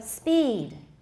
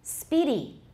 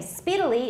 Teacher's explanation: the vowel in speed is longer than the first vowel in speedy, and this in turn is longer than the first vowel in speedily